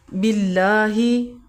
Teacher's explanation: آمنا، ایمان لائے ہم، باللہ، اللہ کے لام سے پہلے اگر زبر ہو تو موٹا کر کے پڑھا جاتا ہے، اور اگر زیر ہو تو باریک پڑھا جاتا ہے۔ یہاں پہ زیر ہے تو ہم باریک پڑھیں گے، اور کھڑا زبر ہے اللہ کے لام پہ، اس لیے ہم 1 سیکنڈ کے لیے لمبا کریں گے۔